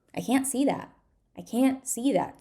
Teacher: we're stressing both can't and see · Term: sentence stress